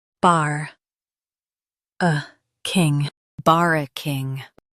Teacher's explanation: Stress bar and keep uh light.